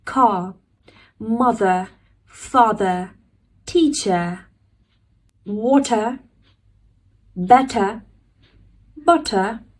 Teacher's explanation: Whenever R comes at the end of the word, we're not going to pronounce it. We'll drop the sound of R